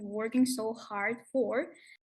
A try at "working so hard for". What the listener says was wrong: It's just the stress shouldn't be on for here. Craving and working so hard for, so hard for, so hard for, not so hard for.